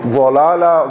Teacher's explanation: ضلالا ضاد موٹا ہوگا اور اس میں سیٹی نہیں ہوگی